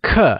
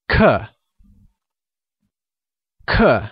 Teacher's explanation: pronounced using a falling tone